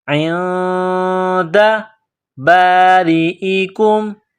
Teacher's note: نون ساکن کے بعد دال ہے تو غنہ کریں گے، آواز ناک میں چھپائیں گے ، عند باریئکم، را کے نیچے زیر ہے تو باریک کرنا